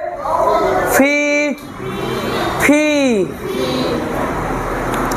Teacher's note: দুই ঠোঁটের মাঝখান থেকে একটা বাতাস বের হওয়া, সে বাতাসের সঙ্গে ফ বের হওয়া